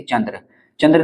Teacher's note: उच्चारण में मुख से कम और नाक से अधिक वायु निकलती है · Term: अनुस्वार